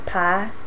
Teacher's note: the monophthongization of I. So the vowel in pie is just pronounced as pa